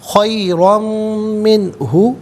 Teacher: منہ میں نون ساکن ہے، اس کے بعد ہا حرف علقی، تو نون ساکن کو بغیر غننے کے بغیر اخفا کے پڑھیں گے، اظہار کیا جائے گا